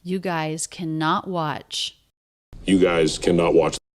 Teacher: you and guys a little bit flatter in pitch leading up to the most stress of cannot